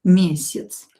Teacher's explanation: ya is reduced here we will pronounce it as e